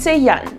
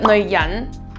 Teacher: you'd say jan4 with a falling tone but neoi5 jan2 with a rising tone